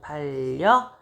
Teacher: 유음아의 영향으로 받침이 리을로 바뀌고요.